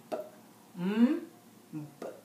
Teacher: The two lips are pressed together, blocking the air. So you notice you have to press both the lips together to block the air of the sukoon sound for m, b, n.